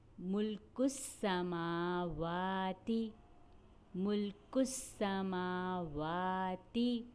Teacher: میم کو ایک الف کے برابر کھینچا گیا کیونکہ میم کے اوپر کھڑا زبر ہے۔ واو کو بھی ایک الف کے برابر کھینچا گیا کیونکہ واو کے اوپر کھڑا زبر ہے۔ · سین کی ادائیگی کرتے ہوئے ہمیں سیٹی کی آواز نکالنی ہوتی ہے۔ ملک السماواتی، میم کو ایک الف کے برابر کھینچا گیا کیونکہ میم کے اوپر کھڑا زبر ہے۔ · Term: سیٹی والا حرف